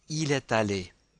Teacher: we link est allé because aller begins with a vowel